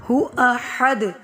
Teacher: ہو احد، ہا باریک پڑھا جائے گا، دال پہ کلکلا کریں گے، یعنی ہمیں ہماری آواز لوٹتی ہوئی محسوس ہوگی